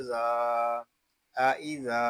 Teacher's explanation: یہاں ذال کو ہم ایک الف تک کھینچ کر پڑھیں گے کیونکہ یہاں الف مدہ ہو رہا ہے